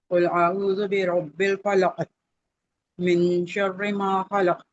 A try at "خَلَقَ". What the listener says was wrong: خلق اب دیکھیں یہاں پہ ایسا لگتا ہے کہ آپ کی جو ہے نا وہ زبان جام ہو گئی ہے جام نہیں ہو خلق خلق ایسے پڑھنا من شر ما خلق